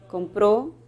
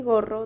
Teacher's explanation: La K sería una oclusiva velar sorda y la G sería una oclusiva velar sonora.